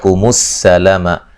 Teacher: سین کو باریک سیٹی سے ادا کریں گے